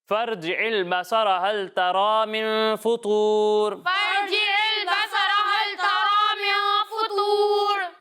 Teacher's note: طا حروف مستعلیہ میں سے ہے تو اسے پر کر کے پڑھیں گے